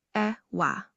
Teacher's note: the most significant legumes like beans are known as ewa, pronounced ewa, low high tone.